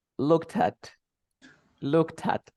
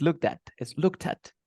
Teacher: like a one word because you link the words okay if you pronounce word by word you notice the difference